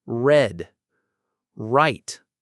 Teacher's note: the sound is made by pulling the tongue back without touching the roof of your mouth.